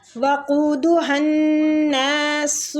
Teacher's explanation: یا مد ہو رہی ہے، تی کو کھینچیں گے، وقودها الناس، قو کے آگے وہ مد ہے، قو کو کھینچنا ہے ، ہن ہا کو نون کے ساتھ ملائیں گے شدت کے